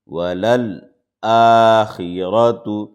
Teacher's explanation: را زبر را، تا پیش تو، ولل آخرۃ۔ را کے اوپر زبر ہے، اس لیے را کو موٹا پڑھیں گے